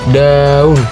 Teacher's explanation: Ujung lidah menempel ke gusi atas. Suara bersuara.